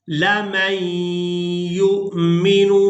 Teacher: मीम को या मुशद्दद के साथ मिलाएंगे, नून साकिन को छोड़ देंगे, या को हमजा साकिन के साथ मिलाएंगे तो झटके के साथ अदा करेंगे